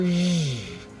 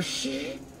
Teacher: sounds that are just voiced and unvoiced with the same mouth shape